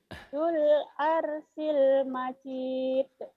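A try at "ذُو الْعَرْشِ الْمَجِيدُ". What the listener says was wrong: Dzul arsyil. Shinnya utangnya tuh. Shin. Dzul arsyil majid.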